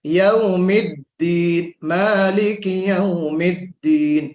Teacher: دال کا جو جہر ہے صفت میں اس کو واضح کرنا ہے